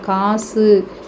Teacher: உகரம் முடியும் போது ஒரு மாத்திரையில இருந்து குறைந்து அரை மாத்திரை அளவாக ஒளிக்கும் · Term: குற்றியல் உகரம்